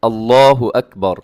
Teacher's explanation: اللہ اکبر نہیں کرنا، بلکہ آپ نے اللہ ایسے موٹا کر کے اپنے اس لفظ کو ادا کرنا ہے